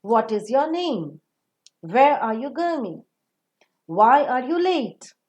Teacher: the wh type of sentences which are matter of fact way are also giving the falling tone